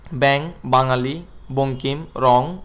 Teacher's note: অনুস্বার এর উচ্চারণ অং হয়